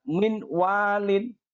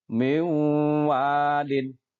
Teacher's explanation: Kita leburkan matinya kemudian kita masukkan ke huruf idgham di depannya dan dibaca dengan mendengung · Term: Idgham Bighunnah, idgham bi ghunnah